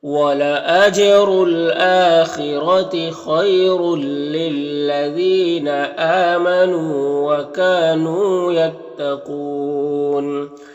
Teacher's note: را کے اوپر دو پیش ہے تو را کو پر پڑھیں گے اور اس دو پیش کی تنوین کے بعد حروف یرملون میں سے لام ہے تو تنوین کو اس لام سے ملا کر بغیر غنہ کے پڑھیں گے، اس کو ادغام تام کہتے ہیں۔